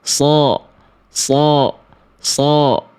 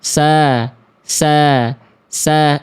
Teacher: kalau pengen jadi shod tinggal lidah dalamnya diangkat